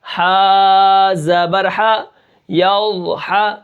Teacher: اب یہاں پر ہم کیا کریں گے، ضاد کو ہم کیا کریں گے، موٹا کر کے پڑھیں گے، اور ہا کو جو ہے ہم کیا کریں گے، وسط حلق یعنی حلق کا درمیان والا حصہ، اس سے ہم ادا کریں گے